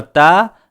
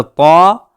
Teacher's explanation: تا اور طا کا ایک ہی مخرج ہے، تا باریک ہوتی ہے اور طا کو پر کیا جاتا ہے